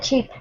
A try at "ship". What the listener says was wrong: Ah, well, a ship. Watch your sh pronunciation. Ship.